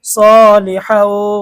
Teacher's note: তানভিনের পরে ইদগামে বাগুনের হরফ ওয়াও এসেছে গুন্না সহ পড়তে হবে